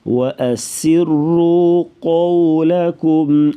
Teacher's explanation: وَأَسِرُّوا سین سیٹی کے آواز, را کو پر پڑھیں گی موٹا اور قولکم کی جو قاف ہے قاف کو پر پڑھیں گی موٹا. واو جو ہے لین ہے اس لیے نرمی سے پڑھا جائے گا اس کو